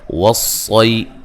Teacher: صاد کو موٹا ادا کریں گے، یا لین ہے۔